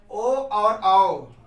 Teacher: कंठ और ओष्ठ को मिलाने से जैसे ओ बोला जाता है तो ओष्ठ भी उसमें सम्मिलित होता है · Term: कंठ ओष्ठ